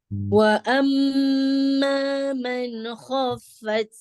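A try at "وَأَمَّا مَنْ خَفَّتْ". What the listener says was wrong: Man ya, tidak ada man. Nah, jangan ditarik lidahnya. Man, biarkan nempel ya ujung lidahnya di gusinya ya. Man, baru langsung pindah ya, kemudian langsung pindah ke kho ya.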